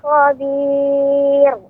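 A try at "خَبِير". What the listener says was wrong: untuk pengucapan khobir di ujung itu tidak boleh tebal Bukan khobir tapi tipis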